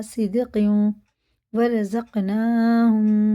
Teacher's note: یہ بھی ادغام واو ہے، تنوین کے بعد واو پیش شد ہے تو یہ غنہ کر کے پڑھیں گے